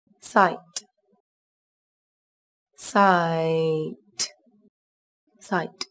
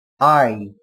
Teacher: Các bạn chú ý từ này có chứa nguyên âm đôi I. Các bạn đọc âm A nối với âm I. Âm A đọc dài hơn âm I một chút là được nhé. I. Một lưu ý nữa đó là từ này kết thúc bằng âm T là một phụ âm vô thanh.